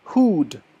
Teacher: when you make the loot sound your lips are extremely rounded